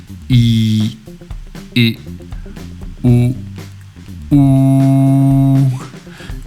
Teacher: you notice your lips are going from spread to rounded